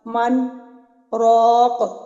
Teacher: آخر میں قاف پہ قلقلہ بھی کرنا ہے